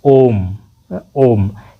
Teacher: क्यों, क्योंकि ओ जो है उसका उच्चारण करने में उसको ज़्यादा लंबा खींचना पड़ता है, तो इसीलिए इसमें थ्री लगाया गया। ओम, ओम ये दीर्घ स्वर से भी ज़्यादा खिंचाता है, 3 गुना समय लेता है, तो इसीलिए ये त्रिमात्रिक स्वर भी कहा जाता है।